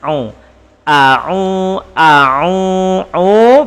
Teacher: Pastikan hamzah a mulut terbuka. A'u ain masuk sedikit kepada makhraj halki.